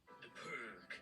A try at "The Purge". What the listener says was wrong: It's Purge. It's a soft G. No, it's Purge. You're saying it like iceberg. Say iceberg. It's Purge. It's a soft G. No, it's Purge. You're saying it like iceberg. Say iceberg. It's Purge.